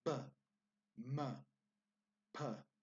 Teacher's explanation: all of those sounds come from the two front lips that we have